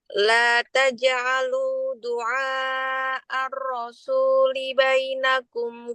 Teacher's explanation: Rohnya itu masih terlalu banyak getarannya. Masih kayak roh kita.